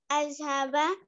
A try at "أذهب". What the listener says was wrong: Listen. It is Azhabu, not Azhaba.